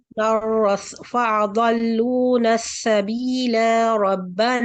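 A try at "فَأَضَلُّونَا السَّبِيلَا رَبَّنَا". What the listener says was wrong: لمبا کر دیا آپ نے. یعنی اگر آپ وصل کر کے آگے آیت ملا کے پڑھیں گے تو پھر آپ نے 2 حرکت دے کے نہیں پڑھنا.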